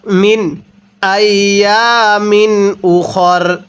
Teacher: এই নুন সাকিনটা আমরা স্পষ্ট করে পড়ব, কারণ এখানে এই নুন সাকিনের পরে হামজাটি হলো ইজহারে হরফ, আর নুন সাকিনের পরে ইজহারে হরফগুলো থেকে কোনো একটি হরফ থাকলে নুন সাকিনটা স্পষ্ট করে পড়তে হয়।